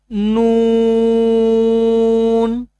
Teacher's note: زبان کی نوک کا ارد گرد والا حصہ اوپر والے دانتوں کی جڑوں سے لگے تو نون ادا ہوتا ہے